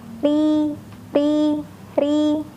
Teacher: Lain halnya ketika huruf ro berharokat kasroh, maka huruf ro akan dibaca lebih tipis.